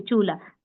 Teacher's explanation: देखिए चूल्हा, तो ये वाला ल है ना, इस ल के साथ ह का साउंड आ रहा है, इससे इसको कहते हैं चूल्हे वाला ल।